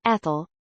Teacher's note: the stress on the second syllable instead of the first